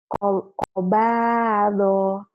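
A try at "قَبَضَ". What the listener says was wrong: Pendek doknya. Kobado. Kobado.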